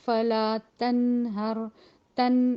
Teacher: یہ جو نون ہے یہ غنہ بہرحال یہ ناک میں آواز جائے گی